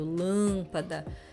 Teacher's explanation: Além da questão do acento, ainda tem uma nasalidade bem marcada.